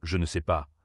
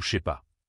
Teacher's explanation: Au lieu de dire très distinctement « je ne sais pas », un natif dira souvent « sais pas » ou « je sais pas ».